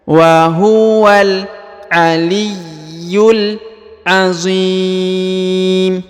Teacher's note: huruf mim yang di ujung ini disukunkan ya karena berhenti bacaan di sini